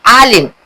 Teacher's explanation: आइन हलक के नीचे से निकलती है